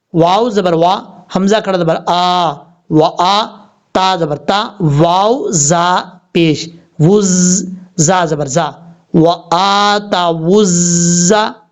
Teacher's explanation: रा की शक्ल में जो ज़ा होता है ये सीटी के साथ पढ़ा जाता है, क्योंकि हरूफ सफ़ीरिया में से है।